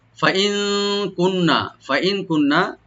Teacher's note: ফাইন কুন্না, ফাইন কুন্না, ফাইন ফা ওপেন রাখবেন, হামজাকে রাইট দিবেন, আর নুন এখানে আমরা নুন সাকিন একফা করব, লাইট গুণা করব